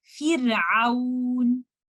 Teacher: You will say Fir. You will make this Ra light with tarqiq with thinness.